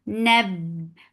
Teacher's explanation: Ba will get sifa of shidda. The sound will cut off abruptly.